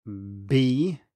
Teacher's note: So if we start voicing before we release the vowel, it turns into a B, and if I exaggerate even more, B, you can hear that the voicing starts before the consonant. However, if I start the voicing later, you will instead perceive this as a P.